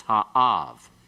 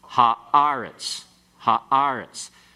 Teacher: The first syllable following the article is an accented syllable, so it's ha-av.